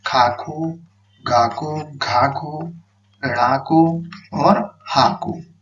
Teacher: हा का उच्चारण स्थान होता है कंठ से